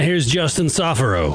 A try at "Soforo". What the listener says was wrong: Soforo. No, it's fur. It's fur, not four. That's why it's fur, man.